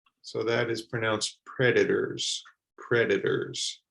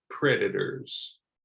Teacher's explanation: in the USA in particular, the T is usually pronounced if it's in the middle of the word like a D with a D sound